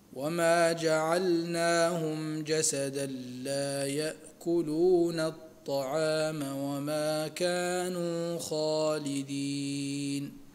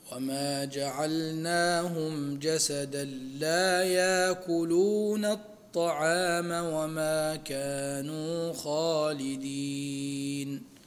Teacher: يأكلون هنا نهمز لحفص ولقالون ونبدل لورش